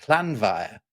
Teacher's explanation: you've had a mutation from the M to a V because in this case it's not the vocative case but it's another case that that initiates that.